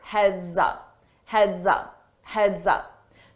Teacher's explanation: notice that s on heads when I combine it with my vowel sound in up I use a zz to combine that together and it sounds like one word